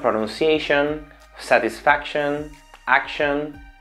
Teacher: siempre tiene esa sh suave, aunque parezca que tiene la fuerte